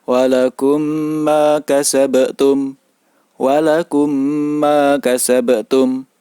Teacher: cara membaca bacaan Idgham Mimi cara membaca bacaan Idgham Mimi yaitu seperti membaca huruf mim yang bertasydid jadi sedikit ada dengungnya